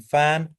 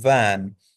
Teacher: कौन सी साउंड होती है जिसमें हम बॉटम लिप जो होता है, नीचे वाला जो होंठ होता है, ये अपर टीथ को जाके टच करता है, यानी एक लिप और ऊपर वाले जो टीथ हैं इनका हम यूज करके जब हम करते हैं साउंड को प्रोड्यूस करने के लिए, तो ऐसी साउंड को लेबियोडेंटल साउंड कहते हैं।